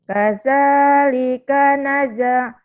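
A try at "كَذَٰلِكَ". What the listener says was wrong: Kaza, bukan kaja, Jangan kaja Jangan Z, D,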